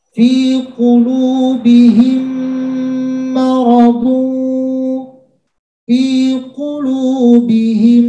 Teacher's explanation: memasukkan ke huruf mim berikutnya dengan disertai dengung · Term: idgham mimi